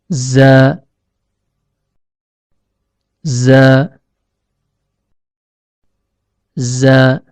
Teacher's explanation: Huruf zai keluar dari ujung lidah yang bertemu dengan bagian dalam gigi seri bawah.